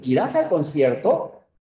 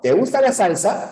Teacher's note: Si yo te pregunto, por ejemplo, ¿irás al concierto? Hay una elevación de voz, ¿no? Esa es la anticadencia, sube, es el tonema ascendente.